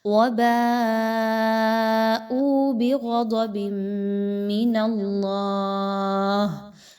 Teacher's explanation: اللہ کے حرف کو پر پڑھنا ہے، باریک نہیں پڑھنا۔ پر کیسے پڑھیں گے؟ زبان کو تھوڑا سا اوپر کی طرف اٹھائیے تو ادائیگی اچھے سے ہوگی۔